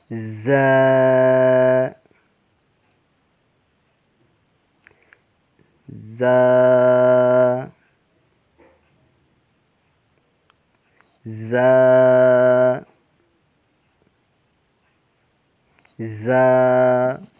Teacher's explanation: زا کو سختی کے ساتھ پڑھتے ہیں اور یہ زا ان 3 حروف میں سے ہے جن میں سیٹی سی آتی ہے. سختی سے سیٹی کے ساتھ ادا کیا جاتا ہے.